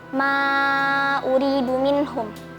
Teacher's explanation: Hukumnya mad jaiz munfasil karena ada huruf mad alif bertemu dengan hamzah di lain kata, dibaca panjang 4 atau 5 harokat